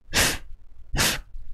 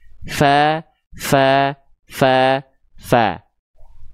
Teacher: Ujung gigi sari atas kita lah yang disentuhkan dengan perut bibir bawah. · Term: huruf fa